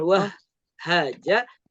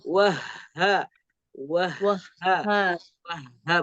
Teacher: Hati-hati ketika membaca ha dengan tasdid. Pastikan tidak ada jeda. Bukan wah haja, tapi wah ha.